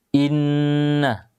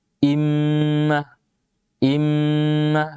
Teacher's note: suara dengung Iya suara sengau yang keluar dari rongga hidung yang selalu menyertai ketika mengucapkan huruf nun dan mim Iya jadi suara yang berdengung suara yang keluar dari rongga hidung